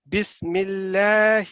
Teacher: جو اللہ لام کی جو فتح اشباعیہ ہے یہ لازمی 2 سیکنڈ تک ہونی چاہیے